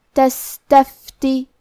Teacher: کلمت تستفتی میں سین ساکن ہے، لہذا ہمیں سین کو ہمزے سے پڑھنا ہے، اور ہمزے کا معنی ہے کہ حرف کی آواز ایسے کمزور ہو کہ اس میں پستی پائی جائے. تو ہم یہ کلمہ کو ایسے پڑھیں گے تستفتی.